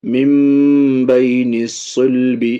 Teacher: نون کو میم سے بدل رہے ہیں با جانے کی وجہ سے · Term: اقلاب